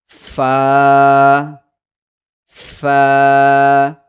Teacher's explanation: اپنے نیچے کے ہونٹ کو اوپر کے دانتوں پہ لگائیں گے، اوپر کے دانتوں کے نوک پہ لگائیں گے۔